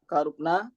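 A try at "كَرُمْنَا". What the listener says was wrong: Ini huruf mim jadi Pak.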